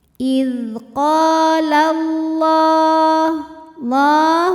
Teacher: Cara membacanya, lam dipanjangkan 2 harokat. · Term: mad tabi'i muqaddar